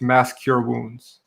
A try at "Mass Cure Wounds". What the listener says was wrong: I know, but it sounds like you're saying mask your wounds.